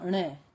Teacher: जीभ मूर्धा से टच करती है और नाक से ध्वनि आती है